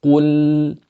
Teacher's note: you keep the sound of the lam for a slight second